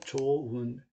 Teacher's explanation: 어간이 일단은 히읗으로 끝나고요. 뒤에 모음으로 되는 어미가 오면은 히읗이 탈락합니다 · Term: 히읗 탈락